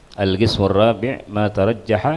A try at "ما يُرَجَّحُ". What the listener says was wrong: La ma yurajjahu. Ma yurajjahu fihi adh-dhahiru 'ala al-asah. Ma yurajjahu. itu bukan pakai ta, ma yurajjahu fihi adh-dhahiru alal asah.